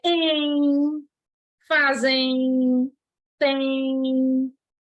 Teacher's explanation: existe um ditongo fonético nasal, que o som sai pelo nariz. Porque esses ditongos estão acompanhados de M ou N.